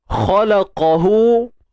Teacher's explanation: Huruf kha dengan qaf ni dia isti'la tebal, terangkat pangkal lidah.